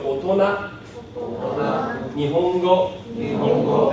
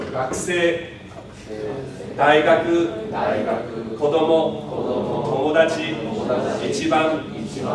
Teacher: it's low to begin with, and then high and flat through the whole word. I didn't say it to the next word until I basically hit something new. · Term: Accent ga nai tango